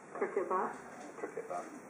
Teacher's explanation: T-glocking, so using a glottal stop reduced to the back of the throat like that sound as opposed to a t.